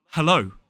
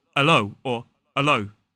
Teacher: in a modern British RP accent it's really important to pronounce that h